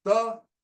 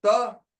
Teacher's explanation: If when I say ta, it is alveolar. When I say ta, it becomes palatal.